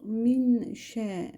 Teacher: görüyorum ben sakin nundan sonra ihva harflerinden şe gelmiştir ihva yapacağım ihva sesin genizden getirilmesi demektir dil ihva yaparken ağız boşluğunda durulur damağı yapıştırılmaz